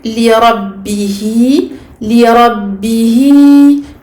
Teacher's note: Donc, ra mufakhama, parce que maftouha. Ici, on a ba mushaddada, donc je double le ba.